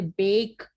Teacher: एक vowel sound दूसरे vowel sound के साथ ग्लाइड होके, यानी मूवमेंट हो रही है आपकी वन वॉवल साउंड से दूसरे वॉवल साउंड में, मूवमेंट हो रही है, उसको हम डिफ्थॉक्स कहते हैं।